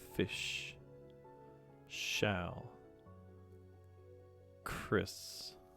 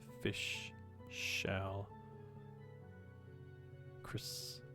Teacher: you'll notice when I say these words, it almost comes out in the form of a hiss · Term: voiceless fricatives